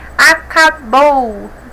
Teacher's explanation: bou é a mais forte a última oxítona